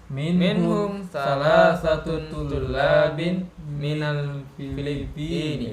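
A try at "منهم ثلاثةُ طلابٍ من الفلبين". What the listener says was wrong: Ya, salah satu ya, bukan salah satun. Minhum thalathatu tullabin minal Filippini.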